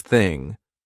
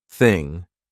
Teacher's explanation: No voice, there's no buzz in my throat. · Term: unvoiced TH